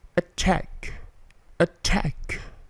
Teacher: T-nya attack, plosive, kemudian K-nya berbunyi memantul